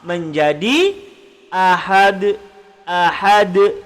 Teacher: Asal dia ahadun, bila kita waqaf menjadi ahad. Ahad. Kita kena lantun pada huruf dal. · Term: qalqalah kubra